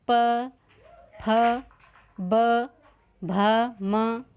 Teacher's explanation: बोल के भी दे सकते प कहां से निकल रहा देखो प फ ब भ म होट से बोले जा रहा है